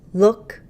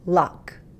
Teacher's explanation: first one's more closed second one's more open these are back vowels where the back part of her tongue